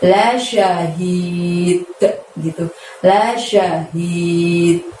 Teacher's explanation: Lalu hi-nya, hi tebal dari tenggorokan bagian bawah, panjangnya 2 ya, hi-nya ditutup dengan dal disukun karena wakof, jadi mantulkan bunyi d di sana